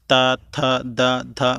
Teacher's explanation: आपकी जो जीभ है वो दांतों को टच करे तो दंत व्यंजन होते हैं